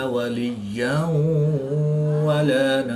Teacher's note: دو زبر کی تنوین کے بعد واو حروف یرملون میں سے ہے، تو یہاں پر ادغام مع الغنہ ہوگا